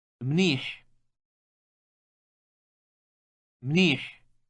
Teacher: the final sound in the word is produced in the throat with some friction it is similar to the English H but with friction